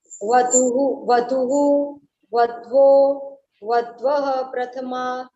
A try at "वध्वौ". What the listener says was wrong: वध्वौ बोलना है, वध्वौ। औ का उच्चारण चाहिए। हाँ वध्वौ।